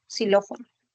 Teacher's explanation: la palabra xilófono tú la escribes con X inicial, pero a nivel de pronunciación es la fricativa alveolar